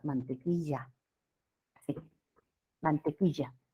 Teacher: También tenemos el yeísmo, ¿ya? En la costa el yeísmo. Confundimos la doble L con la Y.